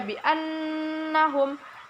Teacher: ada nun bertasydid dan cara membacanya mendengung 2-3 harokat